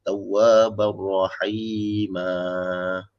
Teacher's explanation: So bacaan dia nak berhenti kena 2 harakat. Kena panjang. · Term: mad iwad